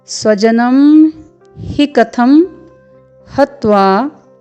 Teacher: क्योंकि ह में ह्रस्व स्वर है इसलिए हम इसका उच्चारण जल्दी से करेंगे